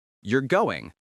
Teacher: A falling intonation indicates a statement. You're going sounds like a statement because the voice falls.